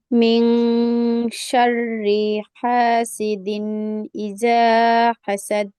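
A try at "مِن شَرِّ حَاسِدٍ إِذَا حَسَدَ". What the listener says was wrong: আপুর পড়া সুন্দর হয়েছে মাশাআল্লাহ, কিন্তু জাল উচ্চারণটা হয়নি আর শেষে কলকলাটা হয়নি। আবার পড়ুন।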